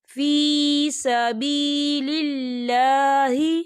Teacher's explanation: یہاں پر اللہ کا نام باریک پڑھا جائے گا، کیونکہ اللہ کے نام سے پہلے زیر ہے تو ہم اسے باریک پڑھیں گے.